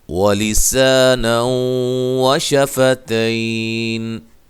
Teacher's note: کریں گے، ٹھیک ہے۔ وَلِسَانًا وَشَفَتَيْن، وَلِسَا سا الف مدہ ہے، نو یہاں نون تنوین کا ادغام مع الغنہ ہے